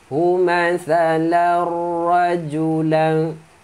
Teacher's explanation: Daraballahu mathalar, hu mathalar, tanwin masuk ke ra.